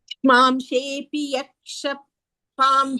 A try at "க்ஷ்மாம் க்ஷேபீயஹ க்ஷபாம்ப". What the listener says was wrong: யக்ஷ இல்ல, யஹ க்ஷ.